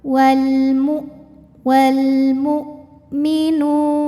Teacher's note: Suara hamzah itu dari segi suara tertahan. Jadi kalau kita tekan bunyinya enggak keluar.